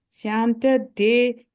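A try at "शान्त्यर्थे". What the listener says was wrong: That Shantyarte Sha sound. Shantyarte.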